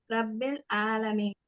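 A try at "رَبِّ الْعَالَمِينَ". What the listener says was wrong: ரா heavy பண்ணுங்க. ஐன் heavy பண்ண வேண்டாம், ரா மட்டும் ஹெவி. ரப்பில் ஆலமீன்.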